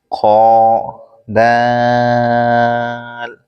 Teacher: خو اوپر کے حلق کے اوپر والے حصے سے ادا ہوتا ہے